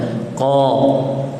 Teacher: Kemudian qa berbaris atas, qaf berbaris atas dan panjang 2 harakat